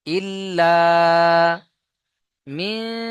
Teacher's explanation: নুন সাকিনকে নাকের মধ্যে তুলে গুণনা করতে হবে